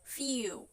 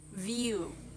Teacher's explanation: The first sound in each word is made exactly the same way, except one is voiceless and the other is the voiced.